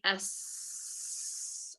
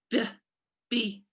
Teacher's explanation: burst that's what creates that sound so you kind of like the b sound cannot be held and does not linger so like s i can hold that sound for really long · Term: stop sound